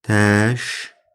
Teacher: Təşkilat. Bax, buradakı K G-yə çevriləcək.